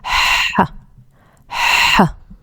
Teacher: When you make this sound, we make it without that's uh without the uh vocal cord ver vibration. It's like a whispering from the from the middle of the throat.